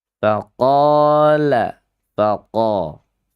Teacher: Lidahnya yang miring ketika mengucapkan huruf lam. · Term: inhiraf